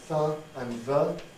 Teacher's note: the friction for th and the is being produced over a whole area of the tongue